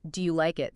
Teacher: In connected speech, that often sounds more like, do you like it? See how the do you kind of squishes together?